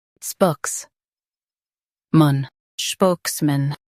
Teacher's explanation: Emphasize spokes and soften mun.